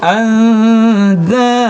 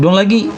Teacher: Angdada bukan, tapi andada. Kalau digabung andada, masuk hidung lagi, keluar dari rongga hidung lagi bunyinya andada.